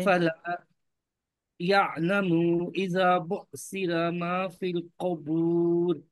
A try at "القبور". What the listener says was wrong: قوف کے اوپر پیش پڑھو، قوف کے اوپر آپ زبر پڑھ رہے ہو.